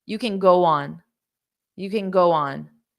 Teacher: there's no linking here because we have a consonant and a consonant consonant and consonant